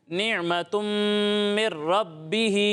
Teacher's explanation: یہاں عین ساکن میں جھٹکا نہیں دینا